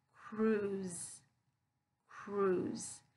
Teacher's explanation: Now here, that S sound, it's going to be voice, so it's going to be that Z voice sound. So cruise. So it's not cruise, but cruise.